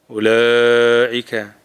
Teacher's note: أولئك مد واجب متصل because it is in the same word همزة and ألف in the same word